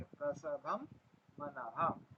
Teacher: अब प्रसम में जो अनुस्वार है उसको हम म ही उच्चार करेंगे क्यों करेंगे क्योंकि बाद में म आया ठीक है प्रसम मनः